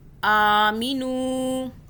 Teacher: واو جو ہے یہاں پہ مدہ ہو رہی ہے، نون واو پیش، نو ایک الف کے برابر کھینچا · آ کو کھینچیں گے، اوپر کھڑا زبر ہے، آ ایک الف کے برابر کھینچیں گے